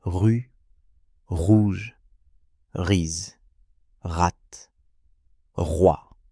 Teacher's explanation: Vous devez sentir une petite vibration au fond de la gorge comme si vous gargarisiez de l'eau très légèrement. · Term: son R